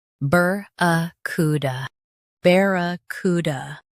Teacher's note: Stress cu and keep da light. · Bear, ku, d, BARRACUDA, bear, ku, d, BARRACUDA. Stress ku and keep d light.